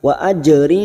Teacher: qalqala Sugra yang mati asli di tengah kalimat jangan lupa dipantulkan